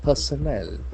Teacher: We can see that the middle R is silent.